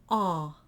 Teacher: it's like an ah but it's nasalized a little bit